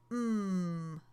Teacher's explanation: put your lips together mmm air through your nose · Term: nasals